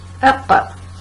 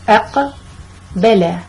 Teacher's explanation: I just vibrated the sound of the letter, shaked it a little bit. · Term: Qalqalah vibration